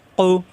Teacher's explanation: কু জিহ্বার গোড়া থেকে উচ্চারণ